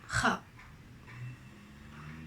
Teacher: you produce it from the soft palate